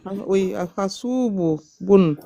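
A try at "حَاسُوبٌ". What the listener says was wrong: Boun. Prolonge le ha.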